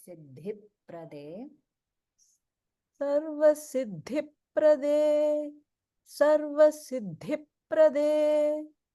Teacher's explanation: make sure that the Mahaprana is on the dhi in Siddhi, and then de is Alpa Prana, so it's like Siddhiprade.